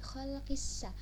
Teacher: Nah, itu setelah qi ada alif lam. Nah, tapi alif lamnya itu tidak terbaca karena langsung masuk huruf sin. Jadi yaitu adalah alif lam syamsiyah ya.